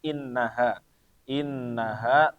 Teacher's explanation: yang pertama itu ada tasdidnya maka dibacanya ditahan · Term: dengung